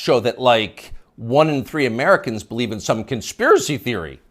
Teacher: the upspeak, the rising inflection at the end of the sentence. That's a familiar tick in Brooklyn.